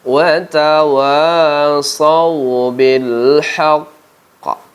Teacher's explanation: Hakikatnya qaf ini adalah 2 huruf, qaf yang mati yang pertama dan qaf yang hidup yang kedua. Jadi ketika kita membaca huruf qaf yang bertasydid ini, kita baca tingkatan qalqalah yang paling tinggi saat kita berwaqaf padanya